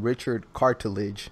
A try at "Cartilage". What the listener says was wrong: No, you've just said three again. It's Cartilage.